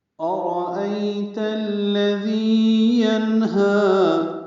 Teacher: حمزہ اقصی حلق سے واضح ادا کریں گے ، را پر پڑھیں گے، ای عائلین ہے، نرمی سے پڑھیں